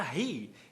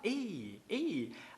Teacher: ele faz o dropping, que é o apagamento do H